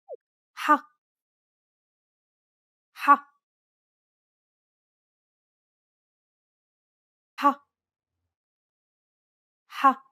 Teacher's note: This sound does not exist in English. It sounds a bit like you're clearing your throat. You should feel like you're pronouncing an H sound with some friction. You should feel some pressure at the back of your mouth near your throat area.